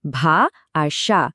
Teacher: ভা আর সা এই দুটোই আ স্বরধ্বনি দিয়ে শেষ হচ্ছে, তার মানে এগুলো হলো মুক্ত দল।